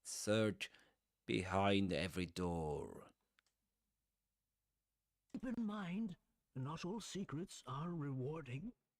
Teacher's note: he's got a soft, distinct Irish accent. That's why he does pronounce the R at the end.